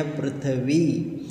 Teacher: क्योंकि ये र का रेफ है तो इसलिए र का थोड़ा सा हल्का सा उच्चार आना चाहिए